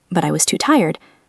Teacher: My voice goes down to show I am finished.